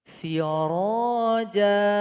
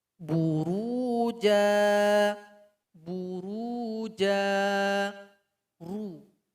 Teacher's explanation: Jadi dibaca tebal ini maksudnya ketika pengucapan ra, vokal suara di mulut kita itu terkumpul semuanya. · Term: ra dibaca tebal